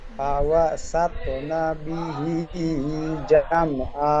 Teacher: তোর উপরে সাকিন আছে, তাই ডান দিকের অক্ষরের সাথে মিলিয়ে কলকলা করে পড়তে হবে।